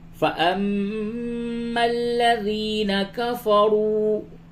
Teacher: میم مشدد ہے، اس پہ غنہ کیجئے، یا مشدد ہے تھوڑا سختی کے ساتھ پڑھیں۔